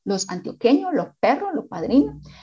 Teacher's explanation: la debilitación de la S del plural